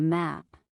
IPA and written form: mæp (Map)